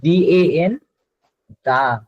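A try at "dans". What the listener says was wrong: দং, দং মানে in, দং, দং। Exactly. আপনার A N এর উচ্চারণটা হয় অং, এ এন ই এন এগুলোর উচ্চারণটা হয় অং, এগুলোর উচ্চারণটা হয় অং।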